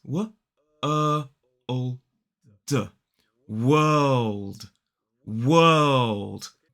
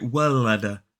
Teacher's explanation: same sound we see in a word like bird and then we have the dark L which is kind of like an all sound